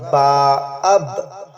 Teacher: دونوں ہونٹوں کے گیلے حصے سے، اندر کا جو گیلا حصہ ہے اس دونوں ملائیں گے